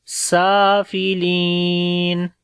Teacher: لی کو لمبا کریں گے، یا مدہ ہے. سافلین.